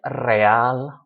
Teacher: We don't stress the re, we stress the al. Leal, loyal, we stress the al.